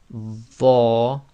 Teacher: The other one is the letter Dho, Dho, which again you apply a bit more pressure on the tongue at the front, and the back of the tongue will lift